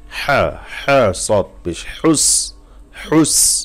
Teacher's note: অবশ্যই এটা খেয়াল করে পড়তে হবে যেন হাটা গলার থেকে আসে